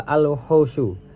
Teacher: al-wuhusyu dibaca alif lam qamariyah karena lam dibaca jelas karena bertemu dengan huruf qamariyah yaitu wawu